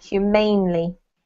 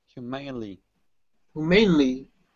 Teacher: So put the emphasis on the ain, humanely.